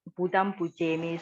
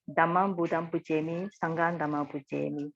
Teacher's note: you notice that the object is always with this nasal consonant, Budam